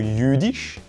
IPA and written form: ˈjyː.dɪʃ (jüdisch)